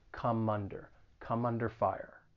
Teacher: this phrase again there's a little bit of linking going on that final consonant sound in come is gonna get linked with the vowel sound in under